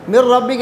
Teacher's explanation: من ربک میں ادغام تام ہے، یعنی نون کے اندر صفت غنہ باقی نہیں رہا